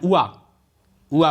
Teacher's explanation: अब हम या वाह जब बोलते हैं तो ऊ बोलते हैं और आ बोलते हैं। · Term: अर्ध स्वर